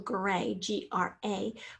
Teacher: a gray with a long a sound at the end of the first syllable that makes it an open syllable gray gra where the vowel makes its own sound by itself